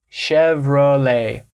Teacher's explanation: You're not pronouncing that T at the end. It's Chevrolet.